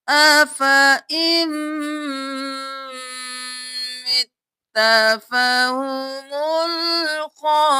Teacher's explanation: کیا افا، افا ام نہیں کرنا، أَفَإِن مِتَّ ان نہیں کرنا، حمزہ کو میم کے ساتھ ملانا ہے، نون کو چھوڑ دینا ہے، میم پر تشدید ہے غنہ بھی کریں